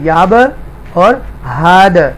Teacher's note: یہاں پر با کلکلہ ہے، یہاں دال کلکلہ ہے، یہاں پر دونوں کلکلہ حروف آ رہے ہیں اور ان کو ایکو ساؤنڈ کے ساتھ پڑھیں گے